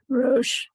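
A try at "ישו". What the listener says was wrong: It's not a resh, it's a yud, a yellow. Yosh ve.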